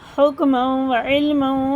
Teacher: ادغام میں واو، ادغام میں واو، دونوں میں غنہ ہوگا